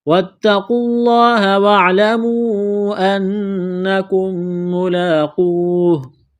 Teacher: تا میں سختی کریں گے تشدید کی وجہ سے ، واو اور الف کو نہیں پڑھیں گے، قاف کو لام